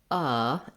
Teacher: it's the stressed schwa which sounds like uh and it's going to be a lax central vowel